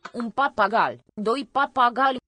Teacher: I think the I is coloring the L, not gali, but gali, which happened in the history of the Slavic languages too, which was going on nearby.